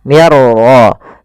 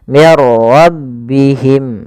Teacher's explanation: masukkan nun ya kepada huruf ra sehingga suara nunnya hilang, langsung terbaca dengan jelas suara ra-nya. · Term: idgham bila gunnah